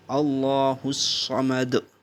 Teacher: اللہ الصمد، پھر اللہ کے نام سے پہلے زبر ہے تو آپ کو اس کو موٹا ادا کرنا ہے، اللہ الصمد۔ صمد سین کی آواز نہیں بلکہ صاد کی آواز آنی چاہیے جو کہ تھوڑا سا پر ادا ہوتا ہے، موٹا ادا ہوتا ہے